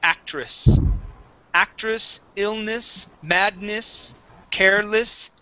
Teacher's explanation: sometimes when we have an e okay it's actually pronounced as a short I so instead of saying actress we say actress actress illness Madness